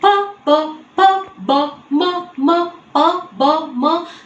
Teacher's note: these use the lips and hence labial